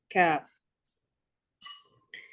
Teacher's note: it is articulated from the deepest part of the tongue and that which lies opposite to it of the roof of the mouth, of the soft tissue and bony palate. So for the letter kaf, it's actually between two parts.